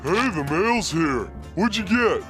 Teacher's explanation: This happens because the letter D is followed by U. And when combining a D plus a function word starting with Y, natives often do a J sound instead, resulting in the sound we hear.